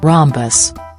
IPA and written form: ˈrɒmbəs (Rhombus)